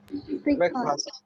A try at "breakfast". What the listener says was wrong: Breakfast. Breakfast. Is it fast? It is not fast. Is breakfast. First, not fast. Breakfast.